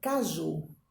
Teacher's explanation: a sílaba tônica é a ju